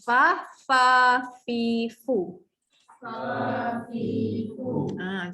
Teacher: apabila gigi atas menyentuh bibir bawah, okey, akan menghasilkan sebutan huruf fa, fi, fu